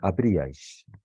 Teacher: la fuerza de la pronunciación ya no recae sobre la vocal abierta, sino sobre una de las 2 cerradas que están fuera, ¿no?